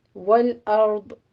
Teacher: والارض میں را بھی مفخم ہے، داد بھی مفخم پڑی جائے گی. ول نہیں کہنا آپ نے، والارض.